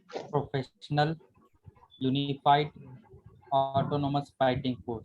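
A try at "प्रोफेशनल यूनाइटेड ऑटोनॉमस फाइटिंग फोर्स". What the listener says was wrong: प्रोफेशनल यूनाइटेड, यूनिफाइड नहीं होता बस।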